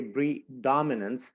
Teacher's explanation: So this syllable dom would receive most of the stress when we pronounce this word.